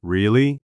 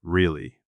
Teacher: Really? With a rising intonation means you are surprised. Really? With a falling intonation means you are skeptical.